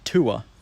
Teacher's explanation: Or people split it into 2 vowels, the goose vowel and then just a schwa, so tuer.